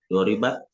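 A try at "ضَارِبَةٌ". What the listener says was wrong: Doribatun dibunyikan belakang.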